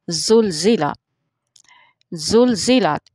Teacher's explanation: जो ज़ा है इसका जो मखरज है वो दोनों आगे वाले जो दांत हैं वो एक दूसरे के साथ लगते हैं और फिर यह हरफ सख्ती से अदा होता है